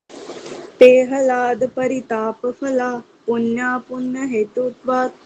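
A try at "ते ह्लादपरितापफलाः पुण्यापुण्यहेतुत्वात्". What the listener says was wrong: हाँ, देखो है के अंदर जो लय है ये भी आधा लय है, तो आपको हला नहीं बोलना इसको, ठीक है। हला ऐसे बोलना, इकट्ठा एकदम से लय बोलना पड़ेगा। ते हला।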